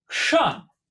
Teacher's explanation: you have to roll your tongue back, up behind your soft palate, creating this kind of almost back of the mouth, not quite guttural sound